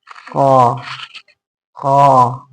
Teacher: कंठ के पास जीभ का जो एकदम जड़ है, मूल माने जड़, जीभ जहां से शुरू होती है, जीभ का जो जड़ है वो प्रेशर देती है। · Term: जिह्वा मूली